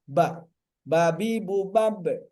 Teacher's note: atau pertemuan ya menutup bibir sepenuhnya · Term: huruf ba